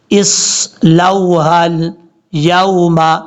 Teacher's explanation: ہاں کو لام سے ملاتے ہوئے الف اور حمزہ کو چھوڑ دیں گے